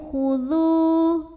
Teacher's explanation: Amanu khudhu, dzu juga mad tabi'i dhahiri karena waw sukun sebelumnya dhammah, maka dzal panjang 2 harokat